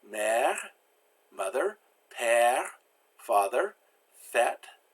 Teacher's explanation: Then you've got the E with the grave accent, or the circumflex accent, and it's pronounced like eh, kind of like egg, but again, you pull your mouth a little further back, and there's no diphthong, no change in tone as you go through the vowel. So we have mère, mother, père, father, fête, festival or party.